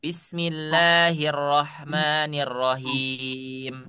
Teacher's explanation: Suara huruf H itu ada di tengah tengah tenggorokan.